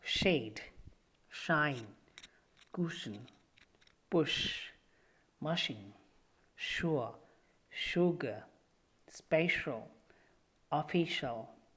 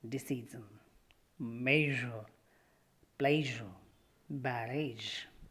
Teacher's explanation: The soft palate is raised to shut off the nasal passage. The vocal cords are held apart for sh sound, but the vocal cords vibrate for j sound.